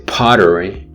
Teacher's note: if you say pottery, there's more aspiration